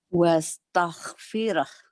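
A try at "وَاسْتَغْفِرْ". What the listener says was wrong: Ya, Jawanya masih ada ya. Nggak apa-apa biar diakui ya. Wastaghfir. Nanti ibu latih G-nya ya. Wastaghfir. Walaupun kamu orang Jawa, tapi kamu G-nya harus bagus.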